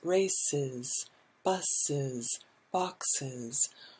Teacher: it adds an extra syllable race is one syllable races is two syllables